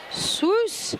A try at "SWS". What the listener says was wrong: Pronounced soos, not swoos.